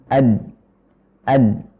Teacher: Ketika kita mengucapkan ad, maka udara dan suara tertahan di ujung lidah yang menempel di pangkal gigi seri